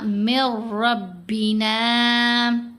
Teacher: یرملون کا یہ بھی ادغام ہے، لیکن یرملون کے ادغام میں آپ کو یاد ہوگا را مشدد کے اوپر اور لام مشدد کے اوپر جب ہم نے ادغام کرنا ہے تو ساتھ غنہ نہیں کرنا، تو یہاں ہم نے من ربنا نہیں پڑھنا، من ربنا۔